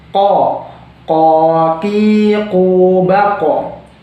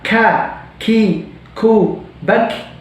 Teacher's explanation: bedanya kalau ko itu harus tebal, tapi ka itu harus tipis